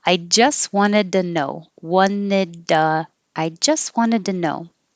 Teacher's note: the T changes to a D, so now it's duh. · I don't say the T on just. Wanted. I don't say the T.